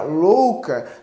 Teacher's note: o fonema u Ele soa de uma maneira mais fraca que o fonema o